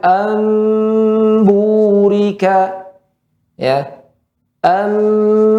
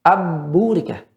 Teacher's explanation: nun atau tanwin bertemu dengan ba, dia diganti dengan huruf mim. Cara membacanya dengan merapatkan kedua bibir. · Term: iqlab